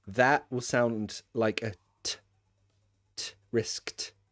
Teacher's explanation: Risk. It's unvoiced. If it's unvoiced, that will sound like a t. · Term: unvoiced sound